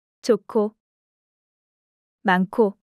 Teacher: 거센 소리가 되려면 반드시 히읗이 있어야 됩니다. 히읗이 앞이나 뒤에서 기역, 디귿, 비읍, 지읒으로 발음되는 자음을 만나면 키읔, 티읕, 피읕, 치읓으로 축약되는 거지요.